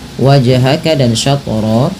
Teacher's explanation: Pantulkan kedua-duanya karena ia bacaan qalqalah. Keselan yang terjadi kalau baca qalqalah tadi sudah kami sebutkan yaitu ketika adanya huruf qalqalah.